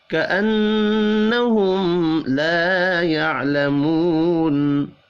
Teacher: نون مشدد پر غنہ کرنا ہے